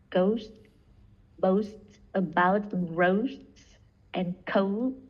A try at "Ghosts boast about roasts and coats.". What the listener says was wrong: Yeah, good.